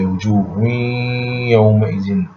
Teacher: ye of Yawma is nasalized for preceding wujuh. I'm not going to discuss the technicalities why and what are the rules for that, but the end result is that it is nasalized in this way, wujuh yawma izin. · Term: nasalization